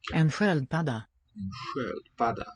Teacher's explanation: Note the really unusual to us SK sound. Letters S and K give a sh sound.